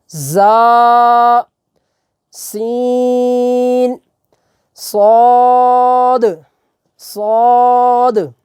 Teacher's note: ان حروف کے اندر سیٹی کی آواز جو ہے وہ ہلکی سی آئے گی